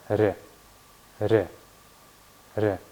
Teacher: И Р мягкая. Очень похоже на сочетание в русском языке буквы Р и мягкого знака.